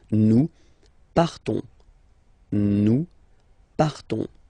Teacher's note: So classic ending O-N-S, you don't pronounce the S, you just have this on sound nasal